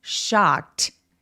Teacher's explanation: shock 엑 소리, 무성음 뒤에 ed가 표현되면 요거는 통째로 어떻게 발음한다? 똑같은 무성음 소리로 트로 발음한다.